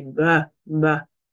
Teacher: Avec le ba, il y a une vibration que vous pouvez sentir.